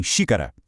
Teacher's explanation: o recuo mais profundo leva a proparoxítona na antepenúltima, exemplificada em xícara